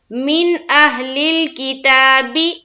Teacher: نون کی آواز کو صرف اور صرف ظاہر کرنا ہے، وہاں پر دیر نہیں کریں گے، اس نون کی آواز کو صرف ہم ظاہر کریں گے۔ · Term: اظہار